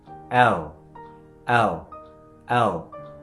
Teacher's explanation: দাঁতের উপরে যে তালু আছে ঠিক ওখানে লাগিয়ে দেবেন।